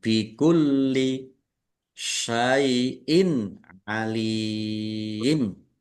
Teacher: Kasroh tanwin bertemu dengan huruf ain, bacaan idhar, dibaca jelas. Lam kasroh ya sukun mat tobi'i, tetapi karena di akhir kata, maka menjadi mat arid lis sukun.